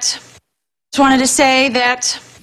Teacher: only one of them is pronounced as a true tea the other three are all dropped